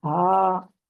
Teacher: سینے کی طرف سے اس ہا کی آواز آنی چاہیے